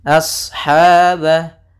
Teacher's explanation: shadnya di sini tebal, a-nya tapi tipis, jangan sampai aus